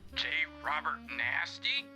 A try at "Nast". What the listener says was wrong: Nast. The name is Nast. The E at the end is silent.